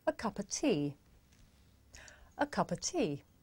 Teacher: the words a and of become schwa